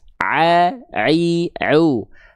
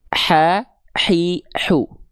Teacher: Karena mereka perbedaan yang sangat terasa itu dari nafas. Ain enggak keluar nafas, A i U. Kalau H kecil keluar nafas.